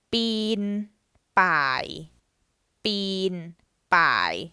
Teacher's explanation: so bean has no tone mark, so that's a mid tone, and pai has the first tone mark, so that's a low tone